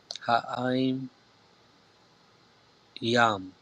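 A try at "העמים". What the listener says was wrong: Ha'aim yam. Perfect, right?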